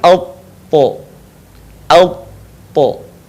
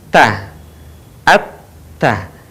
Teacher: ketika kita melafalkan huruf to, posisi lidah bagian pangkal terangkat, bagian depan pun menutup bagian langit-langit. Perhatikan alpo, alpo, sehingga terdengar ketika melafalkan huruf to suaranya menebal.